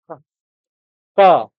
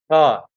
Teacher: Ka is spoken from throat, kantha, and this is Alpapran Aghos.